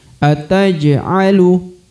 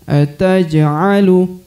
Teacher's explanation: Huruf ja berharokat sukun, maka dia harus dibaca pantul atau dibaca qalqalah. Pantul atau qalqalah karena berharokat sukun ya, maka dibaca ataj'alu.